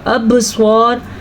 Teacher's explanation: با کے اوپر قلقلہ ہو رہا ہے تو اس کو قلقلے کے ساتھ پڑھیں گے